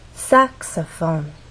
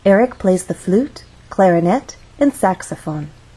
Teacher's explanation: there are also three syllables but the stress syllable is the first one which means we have two more syllables to make our voice fall down and actually can fall down even further the more unstressed syllables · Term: intonation